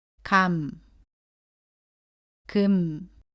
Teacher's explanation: 예를 들면 쓸 때도 미음, 받침도 미음으로 발음합니다. 이때 받침 소리 미음은 첫 소리의 마와는 다르게 입술을 붙인 채로 발음합니다